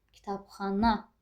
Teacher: Ən axırıncını qüvvətli dedim. Vurğunun işarəsini qoydum.